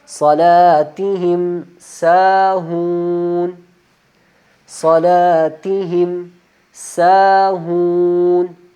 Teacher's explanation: یہاں دیکھیے دونوں، یہ واو بھی واو مدہ ہے، کیوں واو مدہ ہے؟ واو خود ساکن ہے، اس سے پہلے والے حرف کے اوپر پیش آ رہی ہے تو اس وجہ سے ہم اس کو 2 الف کی مقدار لمبا کر کے پڑھیں گے